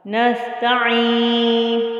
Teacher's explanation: عین آ گیا جو وسط حلق سے ادا ہوگا.